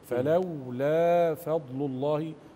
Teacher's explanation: اظهر الحرف الساكن في الاداء اللي هي الواو الساكنه في فلولا